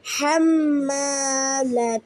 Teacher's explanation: হা কন্ঠনালির মধ্যখান থেকে উচ্চারিত হবে